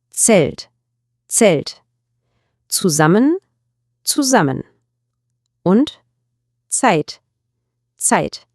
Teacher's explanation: Im Deutschen ist das Z immer scharf und kurz, wie ein CS. Stellen Sie sich mal das Geräusch am Ende des englischen Wortes Cats vor. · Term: Z-Laut